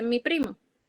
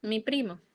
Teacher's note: la fuerza de pronunciación está en pri, mi primo. Casi como si fuera un compuesto en el sentido auditivo.